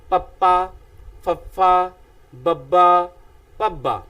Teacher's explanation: ਪ ਬੁੱਲ ਭਾਵ ਹੁੰਦਾ ਹੈ ਉੱਪਰਲਾ ਬੁੱਲ ਹੇਠਲੇ ਬੁੱਲ ਦੇ ਨਾਲ ਜਦੋਂ ਟਕਰਾਉਂਦਾ, ਹਵਾ ਇੱਕੋ ਦਮ ਮੂੰਹ ਵਿੱਚੋਂ ਬਾਹਰ ਨਿਕਲਦੀ ਹੈ, ਤਾਂ ਉਸ ਸਮੇਂ ਜਿਸ ਧੁਨੀ ਦਾ ਉਚਾਰਨ ਕੀਤਾ ਜਾਂਦਾ ਹੈ ਉਸ ਨੂੰ ਅਸੀਂ ਦੋ ਹੋਂਠੀ ਵਿਅੰਜਨ ਆਖਦੇ ਹਾਂ।